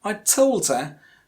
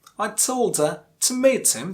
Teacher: the stressed word in this sentence is told.